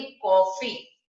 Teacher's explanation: ओ की ध्वनि के बीच की ध्वनि होती है, ये आ और ओ के बीच की ध्वनि होती है